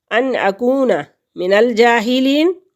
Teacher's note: جیم کے اوپر کھڑی زبر ہے تو ایک حرکت کے برابر اس کو کھینچیں گے. یا ساکن سے پہلے لفظ کے نیچے زیر ہے تو یہ یا مدہ ہے، اس کے کھینچنے کی مقدار جو ہے وہ ایک الف کے برابر ہے.